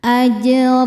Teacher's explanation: Ro dibaca tafhim karena berharakat di atas yaitu harakat tanwin fathah. Cara bacanya ditebalkan. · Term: tafkhim